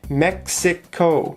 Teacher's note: mexico has three syllables mexico the stress is on the first syllable